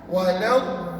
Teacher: Mat itu maknanya panjang, lazim itu wajib. Wajib kamu buat 6 harakat. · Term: mad lazim